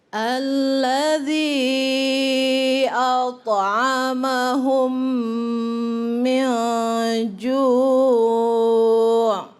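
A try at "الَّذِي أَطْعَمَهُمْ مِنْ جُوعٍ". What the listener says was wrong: Ya, boleh ditambah lagi dengungnya sedikit sini. Min ju'.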